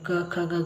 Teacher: ಕಂಠ್ಯ ಅಕ್ಷರಗಳು ಅಂತ ಹೇಳ್ತಾರೆ ಯಾಕಂದ್ರೆ ಇದು ಕಂಠದಿಂದ ನಾವು ಉಚ್ಚರಿಸುತ್ತೇವೆ